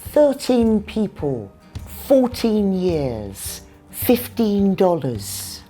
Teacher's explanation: The stress is on the first syllable again. It's because the number is followed by a noun.